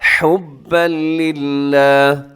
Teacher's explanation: یہاں بھی ادغام ہو رہا ہے لیکن بغیر غننے کے۔ حبن پہ تنوین ہے اور تنوین کے بعد لام یرملون کا، یہاں پہ ادغام بغیر غننے کے۔ حبا للہ، للہ اسے اپنے باریک رکھنا ہے کیونکہ اس کے للہ کے لام سے پہلے لام کے نیچے زیر ہے، للہ۔